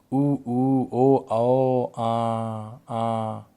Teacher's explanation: जिन स्वरों के उच्चारण में जीभ का पिछला भाग सामान्य स्थिति में उठता है, उसे हम क्या कहते हैं, पश्च स्वर कहते हैं। ठीक है, जैसे ओ, उ, ओ, आओ तथा आ।